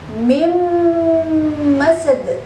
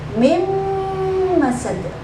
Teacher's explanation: suara nun kita masukkan ke huruf mim dengan mendengung, mim masad, 2 ketukan, mim masad. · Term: idgham bi gunnah